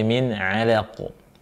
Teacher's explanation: Kemudian ainnya tipis, lamnya tipis, qafnya qalqalah.